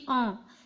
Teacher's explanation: स्वर के उच्चारण में वायु यदि मुंह के स्थान के साथ-साथ नाक से भी जब निकलती है तो अनुनासिक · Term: अनुनासिक स्वर